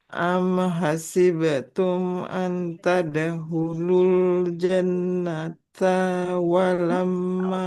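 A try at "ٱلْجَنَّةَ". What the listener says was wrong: Tanya panjang atau tidak ibu? Al jannata. Tidak boleh kita panjangkan. Am hasibtum an tadkhulul jannata.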